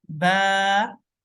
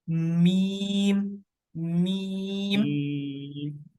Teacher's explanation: जो बा है वो वेट पार्ट से ऑफ योर लिप्स, और मीम dry part of your lips